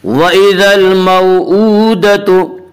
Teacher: وَإِذَا الْمَوْءُودَةُ، حمزہ کے اوپر الٹا پیش ہے، الٹا پیش قائم مقام ہے واو مدہ کے، اس لیے الٹا پیش کو ایک الف کے برابر کھینچ کر پڑھیں گے